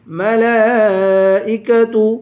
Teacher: لام پہ کھڑا زبر ہے اور مد بھی ہے، اس مد کو 5 الف کی مقدار کھینچ کر پڑھیں گے